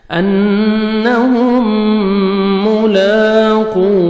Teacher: مرکھڑا زبر ہے 1 سیکنڈ لام کو کھینچیں گے انہم ملاقو واو مدہ 1 سیکنڈ آپ نے قاف کو کھینچنا ہے اور قاف کو موٹا کر کے پڑھیں گے